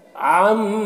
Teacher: عین کو حلق سے ادا کریں گے اور میم میں غنہ کریں گے